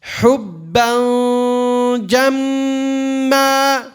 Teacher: A gunna, nasalization. Where's the makhraj of the jim? Middle of the tongue.